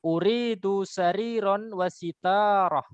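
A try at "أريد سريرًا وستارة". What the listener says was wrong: Bukan sya ya, sa. Uridu sariron wasitarah.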